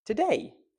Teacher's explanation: In English, there is only ever one stressed syllable in a word. For example, the word today. We're stressing the word day.